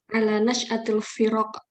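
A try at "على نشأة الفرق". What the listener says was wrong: Nah, fa-nya lebih jelas lagi. Nah, firak. Walaupun nggak terlalu medok gitu, tapi kita tahu kalau Anda beri stressing pada fa, ra-nya tidak. Kalau enggak Anda jadi bacanya, ra-nya nanti jadi berlebih. Ala nash'atil firaq, gitu. Fa-nya betul jelas.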